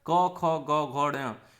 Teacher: ये पांचों जो है कंठ के होते हैं, कंठ से बोले जाते हैं, मतलब गले से बोले जाते हैं · जिन व्यंजनों के उच्चारण कंठ से होता है उनके उच्चारण में जीव का पश्च भाग कोमल तालु को स्पर्श करता है